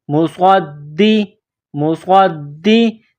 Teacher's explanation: صاد میں سیٹی کی آواز پیدا کرنی ہے. صاد کو موٹا کرنا ہے. صاد کو دال کے ساتھ ملانا ہے.